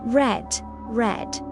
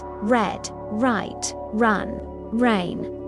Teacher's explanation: In English, especially American English, the R is very strong. Your tongue curls back slightly. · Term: R sound